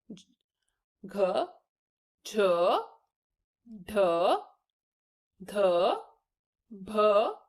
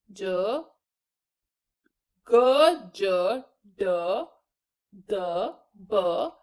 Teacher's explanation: चौथे वर्ण के उच्चारण के अंत में ह की ध्वनि उच्चारित की जाती है या बोली जाती है।